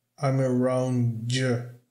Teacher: o D, quando se junta com ya, vai ficar com som de J. J.